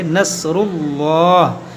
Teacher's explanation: یہاں پر ہم اس میں جلالت اللہ عز و جل کے لام کو موٹا پڑھیں گے. نصر اللہ اس لیے کہ یہاں پر لام سے پہلے پیش ہے، زبر یا پیش ہو تو موٹا پڑھتے ہیں.